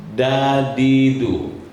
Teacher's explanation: kalau dal itu ujung lidah menekan depan geraham atas, depan gigi atas, gigi depan